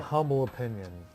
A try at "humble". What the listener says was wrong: Humble. The H is silent.